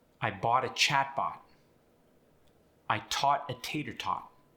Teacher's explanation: The ah sound and the aw sound, although different with the standard American English, are often indistinguishable.